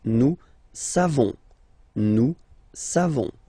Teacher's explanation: classic ending for nous, O-N-S, you don't pronounce the final S